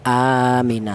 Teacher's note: hamzah yang kedua mati diganti dengan huruf mad yang berupa alif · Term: mad badal